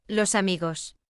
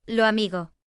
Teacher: But in southern Spain, like in Andalusia and in parts of the Caribbean, S is often aspirated or dropped at the end of syllables